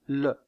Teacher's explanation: la pointe de la langue est contre les alvéoles et l'air passe sur les côtés. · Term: constricive alvéolaire latérale